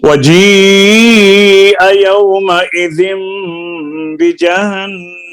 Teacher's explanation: वजीआ यौमइज़िम बिजहन्नम, यौमइज़िम में इक़लाब है, गुन्ना भी होगा यहाँ पर, नून मीम से कन्वर्ट होगी, और बिजहन्नम नून में नून मुशद्दद है, यहाँ पर भी गुन्ना होगा। वजीअ यौमइज़िम बिजहन्नम, वजीअ यौमइज़िन बिजहन्नम, वजीअ यौमइज़िम बिजहन्नम, वजीअ यौमइज़िन बिजहन्नम, वजीअ यौमइज़िम बिजहन्नम, वजीअ यौमइज़िन बिजहन्नम, यौमइज़िन यतज़क्करुल इंसानु व अन्ना लहुज़्ज़िक्रा।